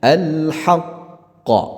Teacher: Nah, qafnya ini, ya, disukunkan tapi dia sukun yang ada penahanannya disebabkan ada tanda tasydidnya, ya, karena berhenti dia kan, maka dia disukunkan. Nah, kalau berhenti maka dia dipantulkan. Pantulannya ini adalah pantulan tebal, ya, qalqalah kubra, bahkan bisa disebut dengan qalqalah kabir, lebih besar, akbar, ya, daripada kubra karena dia pertama dia berada di akhir kalimat, ya.